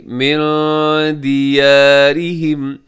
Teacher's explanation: دیارہم میں را باریک ہے کیونکہ را کے نیچے زیر ہے · نون ساکن ہے، نون ساکن کے بعد دال ہے تو یہاں اخفا کیجیے گا